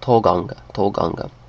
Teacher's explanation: In Danish, it's a kind of a clear O.